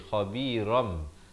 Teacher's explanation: dibacakan dengan digantikan bunyi nun kepada bunyi mim, daripada khabiran jadi khabiram, tapi jangan lupa panjangkan dua harakat. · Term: iqlab